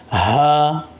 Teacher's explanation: یہ والا جو ہا ہے وہ سینے کی طرف سے جو حصہ ہے اس سے ادا ہوتے ہیں۔ ہا، آپ سینے سے آواز نکال، ہا۔